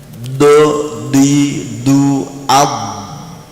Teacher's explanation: lidah ini menekan mengatup ke atas gitu loh Ya sehingga tidak ada nafas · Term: huruf Dod